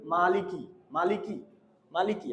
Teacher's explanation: আপনারা একটা জিনিস ছোট্ট করে শুনে রাখেন, এখানে আমি একটা খাড়া জবর দিছি, এখানে আমি একটা খাড়া জবরটা দিছি, এই জবরটা এক আলিফ, তো বেশিরভাগ ক্ষেত্রেই দেখা যায় এক আলিফ যে টানটা আছে, এই যে মালিকি, এই টানটা ছেড়ে দিলে অর্থর পরিবর্তন হয়ে যায়